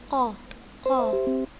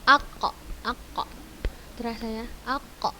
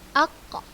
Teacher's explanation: Yang pertama, pangkal lidah belakang pada posisi menempel langit-langit bagian yang lunak atau daging paling belakang setelah tenggorokan, yaitu huruf qa.